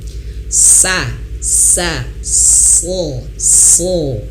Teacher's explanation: kita ucapkan sa, tapi dirasain pangkal lidahnya dinaikin, ya Pak. Dirasain kayak mengucapkan eng tadi, berbareng.